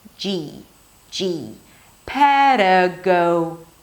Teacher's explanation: And then it's a J sound and a high E.